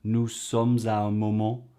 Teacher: the way she makes the liaisons beautifully between nous and sommes